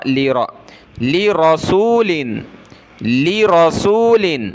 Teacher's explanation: را کو موٹا کریں گے